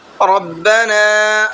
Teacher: را کو پر کر کے پڑھنا ہے اور نون کو کھینچ کر کے پڑھنا ہے